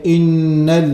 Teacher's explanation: the sound goes and comes from the nasal and we are not touching the tongue to pronounce the noon but the tongue remains touching nowhere it doesn't touch anywhere and